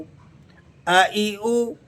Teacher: हमजा ये हुरूफ हलकी में से है। और यह हलक के तीन हिस्सों में से उस हिस्से से अदा होता है जो मुंह की जानिब हलक का हिस्सा मिला हुआ है। वहां से आप हमजा को निकाल कर अदा करेंगे।